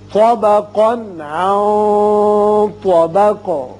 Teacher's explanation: طا کو پر پڑھیں گے طا، اور قاف کو بھی پر پڑھیں گے، لیکن اس کی جو تنوین کا نون ہے اس کا اظہار ہوگا آگے، چونکہ عین حروف حلقی میں سے آ گیا. اس نون پر اخفا کریں گے اور آگے طا حروف مستعلیہ میں سے ہے، لہذا اخفا کی آواز ذرا پر کر کے ادا کی جائے گی اور قاف ساکن کر دیں گے.